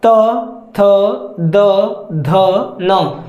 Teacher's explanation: त थ द ध न दांत ऊपर के जो दांत है आपकी जीभ ऊपर के दांत को प्रेशर देते हैं पीछे से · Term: त वर्ग